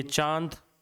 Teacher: हमें मुंह नाक दोनों का उपयोग करना पड़ता है